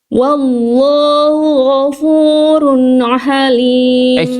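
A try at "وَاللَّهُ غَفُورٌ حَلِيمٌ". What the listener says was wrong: Jangan ada ainnya. Ghafurun halim. Ha. Ada bunyi-bunyi ain tadi di sini. Jangan jadi ada ainnya ya. Wallahu ghafurun halim.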